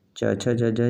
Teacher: च छ ज झ यह तालव्य वर्ण है